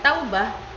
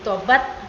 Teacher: menjadi diftong menjadi vokal tunggal o demikian kata Taubah menjadi tobat melalui perubahan diptong au menjadi vokal tunggal o